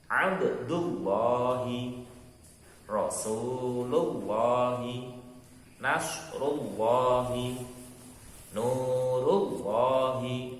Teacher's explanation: Itu lam jalalah yang dibaca tebal.